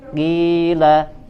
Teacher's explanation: ini berada di derajat yang paling rendah ya, adna darajatut tafkhim, qila ya, bahkan terdengar seolah tipis ya, seolah-olah seakan-akan suaranya tipis.